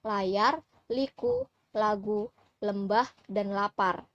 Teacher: lateral aproksiman alveolar yang berbunyi L. L merupakan bunyi bersuara